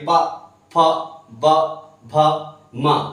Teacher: देखो दोनों होंठ आपस में टकराएंगे, प, फ, ब, भ, म, इस तरह से, समझ रहे हैं ना।